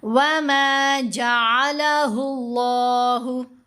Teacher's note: لفظ اللہ کی لام کو ہم نے موٹا پڑھا